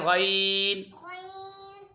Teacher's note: गैन हलक के ऊपर वाले हिस्से से अदा होते हैं।